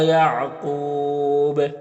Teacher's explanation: وقف کریں گے تو مد عارض وقفی ہوگا اور با میں قلقلہ بھی ہوگا